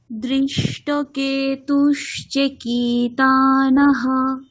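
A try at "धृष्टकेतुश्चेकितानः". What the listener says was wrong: আচ্ছা, কেতুশ্চে চয় একার, একারটা দীর্ঘ বর্ণ, তাহলে টানতে হবে। ধৃষ্টকেতুশ্চেকিতানः। চেটাকে আরেক টানতে হবে, ঠিক আছে? দীর্ঘ বর্ণ মানে টানতে হবে একটু, ঠিক আছে?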